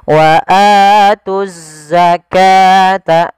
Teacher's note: Ini juga sama, langsung ke huruf za sebagaimana as-shalah. Di sini ada bacaan alif lam syamsiyah. Wa atuzza, langsung diidghamkan ke huruf zai.